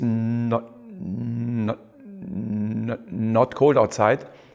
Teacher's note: at the moment he goes from the consonant n to the vowel o uh then uh the vocal cord vibration stops